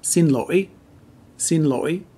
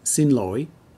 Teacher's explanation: in the north it's pronounced sin loi sin loi and in the south it's sin loi a little softer